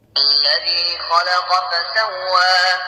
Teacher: الذي، الذال هنا من الحروف اللثوية.